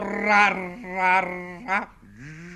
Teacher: portando la punta della lingua contro il palato, in modo che la lingua, spinta dall'aria che esce con forza, cede e ritorna sempre allo stesso punto, producendo una specie di tremolio.